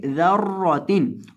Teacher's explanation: जाल को नरमी के साथ पढ़ेंगे, ज़र्रोतिन, और रॉ को मोटा करके पढ़ेंगे क्योंकि रॉ के ऊपर ज़बर है